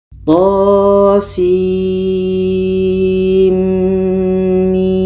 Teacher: to 2 harkat, sin 6 harkat, setelah itu di tengah-tengah 2 harkat karena nun mati bertemu mim, dan setelah itu mim 6 harkat. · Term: idgham bi gunnah